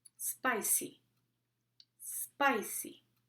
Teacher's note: what to do if the letter P is in the middle of the word in these words there is usually no puff effect